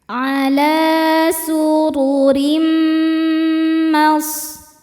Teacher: Lalu berikutnya ada hukum idgham bi gunnah karena ada tanwin kasroh menghadapi huruf mim. Cara bacanya tanwin ini dimasukkan ke mim kemudian dengungkan.